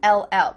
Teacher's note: when we say the contraction it will we kind of add a little u sound before the L